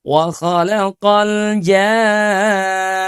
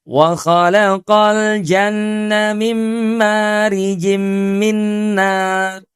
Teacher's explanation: Mad bertemu dengan huruf bertanda tasydid itu dipanjangkan 6 harokat.